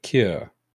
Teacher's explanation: it almost falls down in pitch